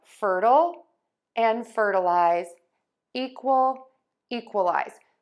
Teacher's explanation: I'm stressing syllable one and making that louder, longer, and higher in both of these cases.